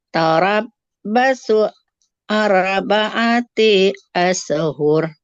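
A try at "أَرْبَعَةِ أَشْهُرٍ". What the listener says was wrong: Oke, bukan tarabbasu, tarabbusu. Nah, arba'ati taknya nggak boleh panjang. Tarabbusu arba'ati ashhur.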